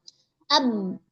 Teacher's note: dia akan terasa jelas bahwasanya pada harfu ba di sini itu berada pada dua bibir